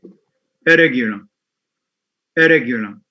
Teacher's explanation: So the n and ra become one and the same, not only in pronunciation, but also in spelling. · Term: full, complete assimilation